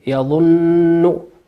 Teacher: نون مشددة تقرأ تشد بمقدار حركتين، يظن وليس يظن.